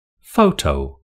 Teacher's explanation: Photo has two syllables with the stress on the first syllable.